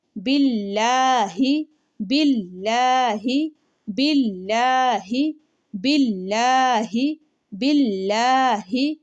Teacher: لفظ اللہ کو باریک پڑھا جاتا ہے، اس لیے لام کو موٹا نہیں کرنا